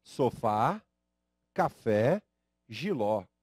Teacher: todas essas palavras que tem a tonicidade na última sílaba fazem uso do acento agudo sílaba forte a última sílaba sofá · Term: oxítonas, oxítona